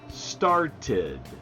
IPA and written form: stɑrtɪd (started)